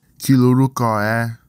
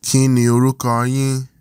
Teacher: Notice that the nasal sound becomes a l sound when ni contracts to the following word. And the r sound is lost.